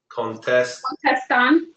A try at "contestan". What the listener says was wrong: Good.